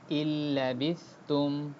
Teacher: লাম আসলে এটা মার্জ হবে, অর্থাৎ হামজা একবারে লামে চলে যাবে, নুনের উচ্চারণ হবে না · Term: উইদাউট গুণনা